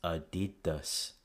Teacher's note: You'll notice that when we move that stress in English, applying the English rules of vowel reduction, the two A's become pronounced as schwas, so it becomes Adidas.